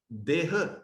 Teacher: ਹਕਾਰਾਂਤਕ ਸ਼ਬਦ ਦਾ ਦੀਰਘ ਮੁਕਤੇ ਵਾਲਾ ਉਚਾਰਨ ਕੀਤਾ ਜਾਂਦਾ ਹੈ